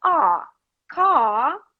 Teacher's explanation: british don't put r they just make it longer